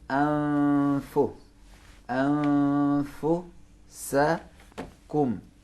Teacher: नून को फे के मखरज में छुपाएंगे